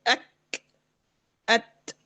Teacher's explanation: سانس چلتی ہے کاف اور تا کے اندر، لیکن آواز کیا بند ہو جاتی ہے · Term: شدت